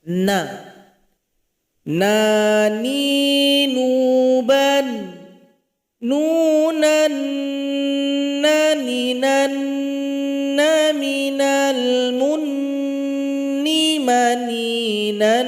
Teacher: Yaitu ujung lidah menempel ke langit-langit kita. Sifatnya adalah bainiah atau tawassud. Aliran suara sedang saja tidak ditekan tidak pula mengalir